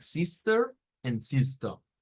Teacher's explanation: las dos serían las S silbantes o no vibrantes o sin vibración